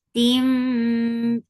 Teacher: idgham with gunna, so keep the sound in your nose for a longer time